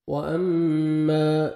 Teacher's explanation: میم مشدد ہے، غنہ کریں گے، نوز میں ساؤنڈ لے کے جائیں گے، الف مدہ 1 سیکنڈ، میم کو آپ نے کھینچنا ہے۔